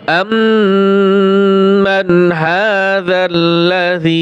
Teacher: এখানে নুন সাকিনের পরে হা আসছে, ইজহারের হরফ, তাহলে এই মিমে গুণনা হবে, নুনে স্পষ্ট হবে।